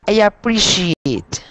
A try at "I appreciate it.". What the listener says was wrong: Good, good.